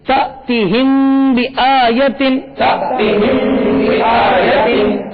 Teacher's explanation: یہاں پر میم ساکن کے بعد با آ رہا ہے، اس لیے یہاں پر اخفاء شفوی ہوگا اور یہاں غنہ بھی کریں گے